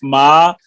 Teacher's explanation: اب دیکھیے الرحمن، اس میں یہ جو میم کے اوپر کھڑی زبر ہے، یہ ہے میم کھڑی زبر جو ہے، یہ اصل میں میم زبر پلس الف ہوتا ہے، میم زبر الف ما یا میم کھڑی زبر ما۔ تو اس کی مقدار جو ہے اس کو ہم 1 الف کی مقدار، اور عرب میں 2 حرکتیں، تو اس کو مد اصلی یا طبی کہا جاتا ہے